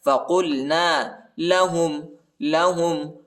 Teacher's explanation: قاف کو لام کے ساتھ ملائیں گے، قاف کو موٹا پڑھنا ہے، پر پڑھنا ہے